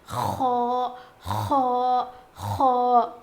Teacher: خو خو خو موٹا پڑھا جائے گا. اس کا مخرج ہے حلق کے اوپر والے حصے سے خو ادا ہوتا ہے.